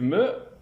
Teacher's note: il y a blocage de l'air au niveau des deux lèvres, aussi appelle-t-on cet occlusif un occlusif bilabial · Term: occlusive bilabiale